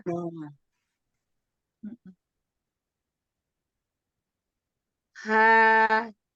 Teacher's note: muncul huruf H besar dengan membuka sebagian kedua pita suara